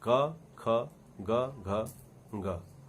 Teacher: क ध्वनि में जितनी हवा खर्च होती है, ख ध्वनि में उससे कहीं ज्यादा हवा खर्च होती है। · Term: महाप्राण